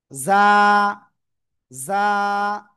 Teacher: জিহ্বার আগার সামনের নিচে দুই দাঁতের পেটও আগের সাথে লাগিয়ে আমরা উচ্চারণ করব